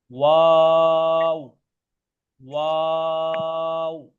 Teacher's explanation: वाव को पढ़ते हैं दोनों होंठों को गोल करके